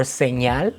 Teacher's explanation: The ñ sound is called a palatal nasal because instead of putting your tongue right behind your teeth, you're pressing against your palate and then releasing air through your nose.